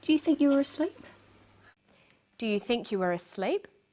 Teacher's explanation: her voice goes up at the end of the sentence we call this a rising tone the rising tone is used for yes/no questions questions that need